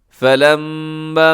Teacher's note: فَلَمَّا میم مشدد پہ غنہ ہے